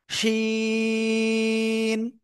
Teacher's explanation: জিহ্বার মধ্যখান বা মাঝখান, তার বরাবর উপরের তালুর সাথে লাগাবেন, লাগিয়ে শা শা শব্দ করে